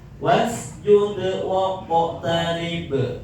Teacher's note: Sekalipun di akhir ayat karena huruf qalqalahnya mati asli maka masuk kategori qalqalah sugra pantulannya cepat. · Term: qalqalah sugro